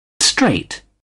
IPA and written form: streɪt (straight)